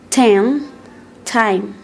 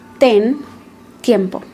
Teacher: the T sound is more plosive in English than in Spanish. It means that there are more air restrictions.